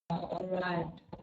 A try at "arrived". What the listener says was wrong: The D on the end, arrived.